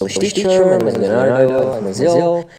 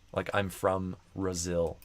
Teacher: I don't think I heard a strong B. It almost sounded like the M kind of took over the B, and I just heard from Brazil.